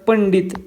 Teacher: या ट वर्गातील अनुनासिक कोणते आहे तर ते आहे न म्हणून याचा उच्चार उच्चार पंडित किंवा न या प्रमाणे होतो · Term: अनुस्वाराचा उच्चार